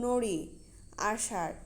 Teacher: জিভের সামনের অংশ পেছনে কুঞ্চিত বাঁকা হয়ে যায় এই ধ্বনিগুলো উচ্চারণ করার সময়। যেমন নড়ি, আষাঢ় শব্দের ডয়বিন্দু র হসন্ত এবং ঢয়বিন্দু র হসন্ত ধ্বনি এ জাতীয় ধ্বনিগুলো এইভাবে উচ্চারিত হয়। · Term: প্রতিবেষ্টিত